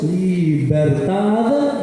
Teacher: B larga se pronuncia bilabial. Ambos labios.